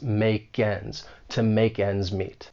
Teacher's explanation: we can link the final sound in make with the beginning vowel sound in ends